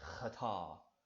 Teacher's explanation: you kind of make that guttural sound in the back of your throat like you're trying to spit